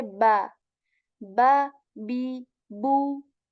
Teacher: We join the lips with strength when we say ba ba B Bo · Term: b letter